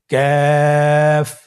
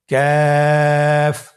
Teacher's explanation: তৃতীয় নম্বর হরফটির নাম ক্যাফ। কাফ উচ্চারণের ক্ষেত্রে অবশ্যই পাতলা করে উচ্চারণ করতে হবে এবং 3 আলিফ টেনে পড়তে হবে।